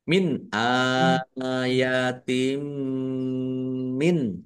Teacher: Mendeng mim ditandai mimnya ada tasdidnya. Mimnya dibaca mendengung ditahan biar tampak mendengungnya. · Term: idgham mimi